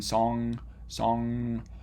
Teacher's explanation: the engma is a nasal sound because air can flow through your nose as you make it